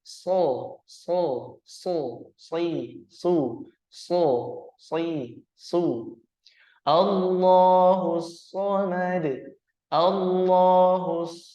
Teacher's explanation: suaranya mengarah ke O karena istiala atau terangkatnya Pangkal lidah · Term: haruf Shad